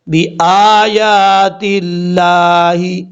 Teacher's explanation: حمزہ کے اوپر کھڑا زبر ہے، ایک الف کی مقدار لمبا کریں گے